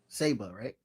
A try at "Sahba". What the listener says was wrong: Saba. Close. Very simple. You're adding a lot of... Foreign to it. You're adding a lot of emphasis. Saba, like the car Saab.